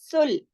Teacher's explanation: सीन और लाम दोनों बारीक हैं। सुल, सीन की आवाज में सीटी की सी साउंड पाई जाती है